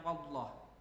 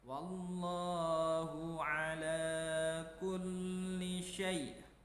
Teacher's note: Wallah di situ juga dibaca tebal karena di situ ada hukum lam jalalah. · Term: lam jalalah tafhim